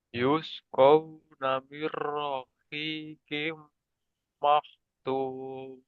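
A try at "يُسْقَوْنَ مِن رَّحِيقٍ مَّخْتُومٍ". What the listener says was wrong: Mero, merohikim maktum. Aliran kho-nya kurang jelas tadi. Maktum, maktum. Intinya di sini kita dapat memasukkan huruf nun ke ra, kemudian tanpa guna.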